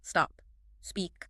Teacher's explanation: the S is a voiceless fricative, requiring the folds to remain open and still · the speaker gradually compresses the duration of the initial hiss until it replicates a natural conversational onset